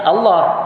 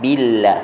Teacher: Kalau ikut lafzul jalalah bunyinya Allah, yang tafkhim. Jadi sebabkan ba tu baris bawah, maka bunyi billah, tarqiq pada sebutannya.